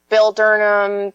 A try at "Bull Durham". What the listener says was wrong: you mean Bull Durham? You mean Bull Durham? Oh, you sound like you said Bill Durham.